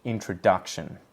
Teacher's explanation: in has the secondary stress, so the lower stress in the word, and duck has the really heavy primary stress